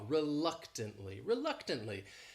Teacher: This word has 4 syllables and the stress is on that second syllable. That third syllable also has that schwa, reluctantly.